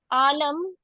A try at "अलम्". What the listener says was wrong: आलम नहीं, अलम के साथ। आलम कहाँ से लिया है?